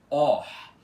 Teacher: ele fica com o som aspirado de OR, aberto e com esse arzinho no final, tá? OR. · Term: vogais aspiradas